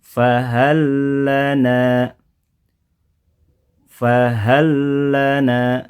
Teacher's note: ini tidak dibaca dengan gunah ya tanpa disertai gunah Jadi cukup kita ampkan bunyi tasdidnya saja [Musik] fahallana fahallana ya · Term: idgham